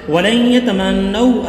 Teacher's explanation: نون ساکن کے بعد یا ہے, یہاں ادغام مع الغنہ کیا جا رہا ہے